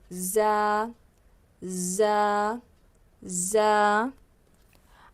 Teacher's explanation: اس میں ایک بز کی طرح آواز آتی ہے نا، وائبریشن ہوتا ہے ایسے، تو ہم کیا کریں گے، اوپر نیچے کے دانتوں کو بند کریں گے، زبان کو نیچے کے جو دانت ہے نا اس پر رکھ کر ادا کریں گے۔